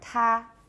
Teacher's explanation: the vocal folds are open and now I've released the stop my vocal folds are still open and they don't come together until we make the vowel after that period of aspiration